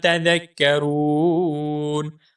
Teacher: تذکرون میں جو را ہے اس را کو ہم پر کر کے یعنی موٹا کر کے پڑھیں گے اور را کو ایک الف کے برابر لمبا کریں گے کیونکہ یہاں پر واو مدہ ہے۔